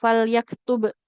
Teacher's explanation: Nah, ini kan ada tanda sukunnya kalau di layar. Karena huruf ba kita baca dengan jelas ya, terdengar bunyi huruf bnya qalqalahnya